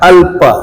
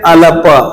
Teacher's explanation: ल हलंत है, इसलिए इसको हलंत की तरह ही बोला जाएगा, यानी कि इसके साथ में कोई भी स्वर नहीं है।